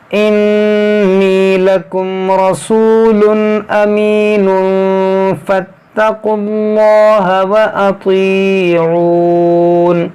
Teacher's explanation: نون ساکن کے بعد فا ہے تو یہاں پر اخفا کریں گے، یعنی غنہ کریں گے